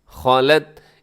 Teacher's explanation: کوشش کرنا ہے کہ آخر میں تا ہلے نہیں ، خالت، ایسے آپ نے تا کو نہیں ہلانا، یہاں اگر